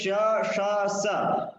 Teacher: श ष स एतेषां विवारः श्वासः अघोषः तेन साकं महाप्राणोऽपि